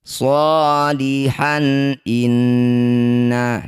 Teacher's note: Disebut bacaan namanya idhar halqi. Cara membacanya bunyi fathah tanwinnya han. Ini baca dengan jelas, tidak usah dengung.